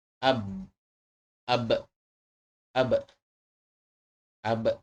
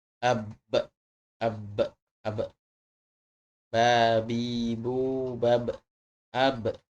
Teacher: Kemudian huruf berikutnya yang ada di dalam bibir, yaitu adalah makhraj huruf ba. Makhraj ba adalah dengan merapatkan kedua bibir.